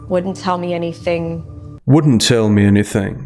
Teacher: rising intonation on the word anything, which makes it sound like she's asking rather than stating